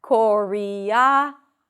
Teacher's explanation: So for choreography, the primary stress is right before the end.